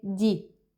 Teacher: they drop the hay, the first syllable at the beginning of the word